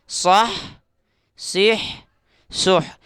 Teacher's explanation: یہ ہا ہے، اس کو حلق سے نکالیں گے، اس کی ایک الگ آواز ہوتی ہے۔